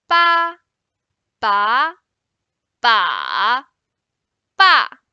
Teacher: So the only difference among these 4 syllables is the tone.